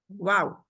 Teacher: अगर होंठ गोल नहीं है तो उनको गोल करें। पहले शुरू करें जब वाव कहना तो आपके होंठ गोल हों, फिर आप खोलें और फिर गोलाई की तरफ ले जाओ।